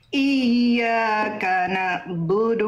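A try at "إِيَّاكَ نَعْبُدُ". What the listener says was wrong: ain sukun jangan terputus Bunda. Na'budu. iyyaka na'budu dia punya sifat tawasud sedikit mengalir ya, suaranya dilafalkan dari tengah tenggorokan.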